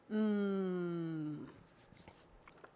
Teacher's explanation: You make this sound by closing your lips and letting the sound resonate through your nasal canal. So you close your lips and say mm, and you should be able to feel your nose vibrate.